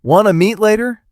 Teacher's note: The lazy tongue makes wanna flow and ties the words together smoothly.